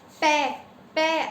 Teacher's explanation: आपस में दोनों होठ भिड़ रहे हैं, यानी ये क्या है, इसका जो पै वर्ग है, पै वर्ग का उच्चारण स्थान क्या हो गया, ओष्ठ हो गया।